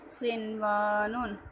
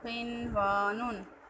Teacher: بہرحال یہاں پر قرآن پاک میں 4 الفاظ اس طرح کے ہیں یہاں پر بیان کیے گئے ہیں کہ جن میں نون ساکن کے بعد حروف یرملون ایک ہی کلمے میں آنے کی وجہ سے یہاں پر ادغام یعنی ہم غنہ نہیں کریں گے بلکہ اس کو بغیر غنہ کے پڑھیں گے